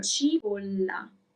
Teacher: There is a double L, so you have to make it longer, a little bit longer.